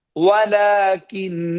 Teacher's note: ওয়া ঠোঁট গোল হবে, লা টান হবে কারণ খাড়া জবর হয়েছে, ইন গুন্না হবে কারণ নুনের উপরে তাসদীদ হয়েছে